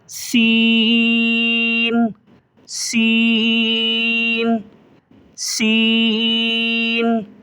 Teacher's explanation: ایک الف سے زیادہ کھینچیں گے اور سیٹی کی سی آواز نکلے گی اس کی